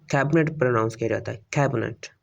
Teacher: इसमें जो मिडल ई साउंड है ये थ्रो द एलिजन डिसअपीयर हो जाता है